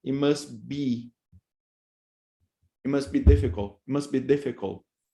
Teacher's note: you have elision of the T because you have bilabial, so it becomes, it must be difficult, it must be difficult, right?